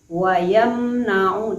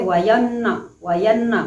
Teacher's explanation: Hukumnya izhar syafawi dibaca dengan terang dan bibir kita terkatup dengan sempurna. Wayamna'u terkatup dengan sempurna karena dia izhar syafawi.